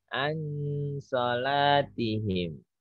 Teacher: Itu gunah semua ditahan. Lebih dari 2 ketuk.